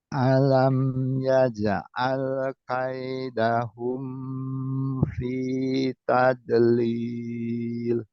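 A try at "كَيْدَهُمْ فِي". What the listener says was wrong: ini pendek. Kaidahum fi. Kaidahum fi tadlil.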